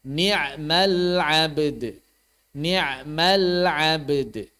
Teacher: maka di sini jelas diqalqolahkan ba dan dalnya